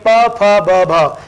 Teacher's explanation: ऐसे उच्चारित करते हैं हम प प या ऊ, प फ ब भ, यानी दोनों होठ टकराते हैं और फिर स्फोट के साथ हवा जो है अंदर से बाहर निकलती है, तब ध्वनि सुनाई देती है प फ ब भ। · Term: ओष्ठ्य वर्ण